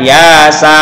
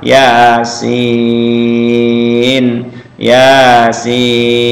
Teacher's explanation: Jadi ya-nya 2 harokat, sin-nya 6 harokat karena termasuk mad lazim mukhaffaf mustaqal harfi.